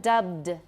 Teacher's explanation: make sure you're voicing at the end we still need voicing